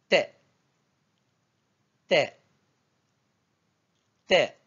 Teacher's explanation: se prononce au niveau de la pointe de la langue qui vient toucher les dents les incisives central et latéral tout en ouvrant la bouche pour libérer brusquement l'air t t t c'est l'équivalent de T du français tel que